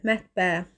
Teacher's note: mətbə sözündə ən-in biri düşür, biri də uzanır · Vurğu sözünün son hecasındadır.